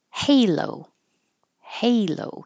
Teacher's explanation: keep your lips rounded to make the O all the way to the end